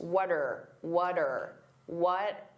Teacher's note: What are can combine together and that R can sound very reduced.